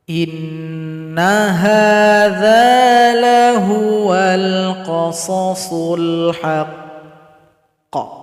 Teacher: Cara berhenti pada qaf yang bertasydid ini sering muncul dan sering kita bahas. Sukunkan huruf qaf, tahan 2 detik baru dipantulkan.